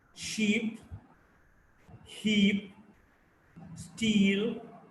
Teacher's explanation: E is a front, close, unrounded vowel.